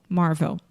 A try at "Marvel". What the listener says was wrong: Yeah, it's almost like marble. Yes, except with a V. Marvel.